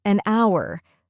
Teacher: The H is silent, so it starts with a vowel sound.